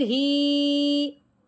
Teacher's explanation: आगे हा है, हा के नीचे लगी हुई खड़ी जेर, ठीक है। अब हम खड़ी जेर हा के नीचे आई है तो इस हा को हमने एक अलिफ के बराबर लंबा करना है।